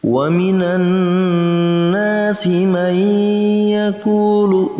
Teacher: wa minan nas dibaca dengung 2 harakat panjangnya · nun yang berharokat tasdid, maka kita baca dengan didengungkan 2 harokat karena masuk dalam kategori gunnah musyaddadah.